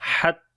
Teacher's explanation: حتی، ہا کو گلے کے درمیان والے حصے سے پڑھیں گے، تا کو لمبا کریں گے، کھڑی زبر ہے